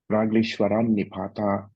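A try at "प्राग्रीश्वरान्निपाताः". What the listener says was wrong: Nipataha. Visarga you have to pronounce.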